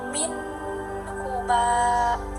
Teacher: tidak dibaca dengung melainkan dibaca dengan jelas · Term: izhar